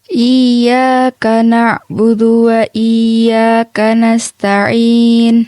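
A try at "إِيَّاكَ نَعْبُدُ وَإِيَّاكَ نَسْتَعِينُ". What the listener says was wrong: Coba untuk bacanya budu itu jangan cepat-cepat. Iyyaka na'budu wa jadi disempurnakan. Iyyaka na'budu wa iyyaka nasta'in. Catatan untuk Kak Nabil adalah di huruf na'budu, huruf dalnya ya.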